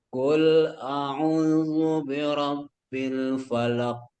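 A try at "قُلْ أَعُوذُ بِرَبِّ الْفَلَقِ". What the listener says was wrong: Enggak, itu masih qalqalah akbar. Karena terlalu lama dipendam sehingga pantulannya besar. Birabbil falaq. Nah, itu langsung falaq. Falaq.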